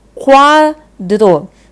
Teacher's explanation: Eu tenho uma semivogal, o U, e uma vogal, o A. Tá? Então, eu tenho um ditongo crescente, vai do mais fraco para o mais forte.